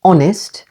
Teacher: Honest, with the stress on the first syllable